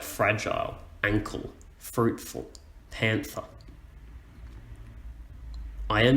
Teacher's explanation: a stressed syllable first followed by an unstressed syllable second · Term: trochaic foot